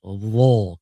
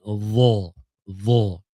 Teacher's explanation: Dan huruf dha adalah huruf itbaq juga. Dan ada lekukan tengah lidah.